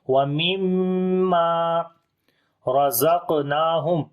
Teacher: وَمِمَّا رَزَقْنَاهُمْ را کو موٹا پڑھیں گے زبر ہے اس کے اوپر قاف کے اوپر قلقلہ کریں گے.